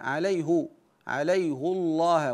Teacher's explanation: حفص بضم الهاء عليه عليه الله ويلزم من الضم تفخيم لام الجلال